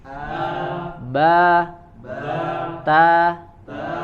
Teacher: fathahnya orang Arab itu adalah fathah yang pertengahan, ya, jadi tidak membuka a, ya, sampai berlebihan atau tidak juga kurang dari kadarnya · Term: fathah mutawassithah